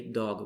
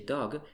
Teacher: In German, if Germans speak English and they say dog, they say dog. They change the G, which has voice, to K, which has no voice. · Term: final devoicing